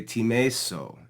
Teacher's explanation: alpha in the stem was lengthened to eta in the future form. Okay, so it's a very simple change, just from a shorter vowel sound to a longer vowel sound.